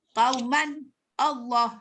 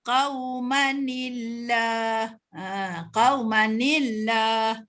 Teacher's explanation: Qauman Allah, tak boleh jadi gitu. Oleh kerana kita nak baca wasal, maka kita hidupkan nun mati tu. Yang ejanya min nun tu kita hidupkan.